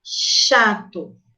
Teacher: As consoantes ch e j, presentes nas palavras chato e jato, oferecem uma constrição no trato na região do palato duro, produzida com a parte anterior da língua em direção à região pós-alveolar.